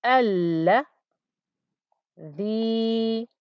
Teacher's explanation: Notice the extra long pronunciation of the lam there, because a lam with a shadda means a double lam.